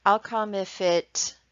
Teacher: So here the teacher repeats part of the learner's sentence, but does not repeat the part with the mistake. And the teacher uses rising intonation to signal that the learner should complete it